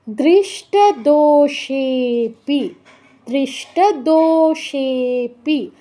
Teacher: দো দীর্ঘ সেও দীর্ঘ কিন্তু লুপ্ত থাকায় সে তে দো থেকেও বেশি টাইম দিতে হবে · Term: প্লুত উচ্চারণ